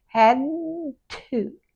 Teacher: The D and the T have the tongue in exactly the same place. One vibrates and one doesn't, so just leave the tongue there.